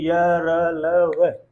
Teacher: जब हम इनका उच्चारण करेंगे य, र, ल, व, करिए य, र, ल, व, जब आप करेंगे तो पाएंगे कि जो वायु है हल्का फुल्का कभी कंठ से हल्का स्पर्श कर रही है, और फिर ताल को, मूर्धा को, और फिर दंत को भी, ओष्ठ को भी हल्का फुल्का स्पर्श करते हुए वायु बाहर निकल रही है। क्योंकि ये मुखांग के सभी भागों को स्पर्श करते हुए बाहर, अंदर के सभी भागों को, अंतस्थ के सभी भागों को स्पर्श करते हुए बाहर निकलते ही हैं। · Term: अंतस्थ व्यंजन ध्वनियां